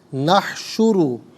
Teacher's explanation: کل یہاں 16 کلمات موجود ہیں، ہر کلمے کو علیحدہ پھر ملا کر پڑھتے ہیں، بغور ملاحظہ فرمائیں۔ نحشرو را پر پیش ہے، را کو پر کر کے پڑھیں گے